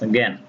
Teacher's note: শব্দের শুরুতে জ ইয় বর্ণটি থাকে, তাহলে উচ্চারণ গ চন্দ্রবিন্দু অথবা গয়জফলা চন্দ্রবিন্দুর মতো হবে।